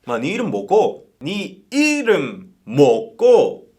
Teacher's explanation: And one useful tip for the Busan gyeongsang dialect is that the accent usually goes on the first syllable. After putting emphasis on the first syllable or word, the remaining words or letters just flow fast or smoothly. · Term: accent emphasis